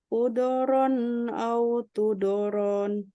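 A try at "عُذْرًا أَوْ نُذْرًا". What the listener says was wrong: Udhran. Pakai dal sukun. Udhran au nudhra.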